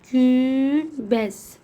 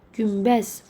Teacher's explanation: Bir də N samiti əgər B M hərflərindən əvvəl gələrsə, deməli N samiti B Mdan əvvəl olarsa, N samiti M kimi tələffüz edilir.